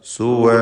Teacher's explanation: സുവ എന്നധികം ദീർഘിപ്പിക്കരുത്. 2 ഹറക്കത്തിൻ്റെ അളവിലുള്ള അലിഫിൻ്റെ ദീർഘമാണ് കൊടുക്കുക.